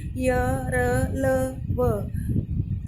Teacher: इनका उच्चारण जीभ, तालु, दांत, होठों के आपस में टकराने से होता है, किंतु कहीं भी पूर्ण स्पर्श नहीं होता। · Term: अंतस्थ व्यंजन